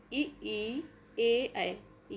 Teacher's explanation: इ ई ए ऐ चारों हैं अग्र स्वर। ये जीभ के आगे वाले भाग से बोले जाते हैं। · जिन स्वरों के उच्चारण में जीभ का अग्र भाग काम करता है उसे अग्रस्वर कहते हैं